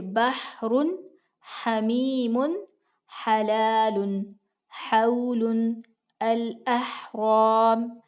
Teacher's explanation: وہ آواز جو وسط حلق سے دباؤ کے ساتھ نکلتی ہے وہ عین کی بھی ہے اور ہا کی بھی ہے. عین ہا وسط حلق سے ہیں، جیسے بحر حمیم حلال حول الاحرام.